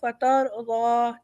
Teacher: فترضی، فترضی، را ہمارا موٹا ہے، ہم نے پہلے پڑھا تھا فترضی، ٹھیک ہے، ضاد ہمارا پیچھے سے نکلے گا اور ایک اسٹریٹ آواز نکلے گی، ہم اسے ضو نہیں کریں گے، او کی آواز نہیں ہے